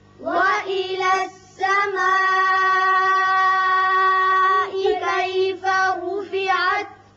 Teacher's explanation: یہ مد متصل ہے، 5 حرکات لمبا کریں گے